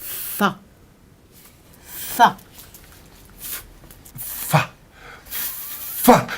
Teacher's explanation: en appuyant les dents d'en haut sur la lèvre du dessous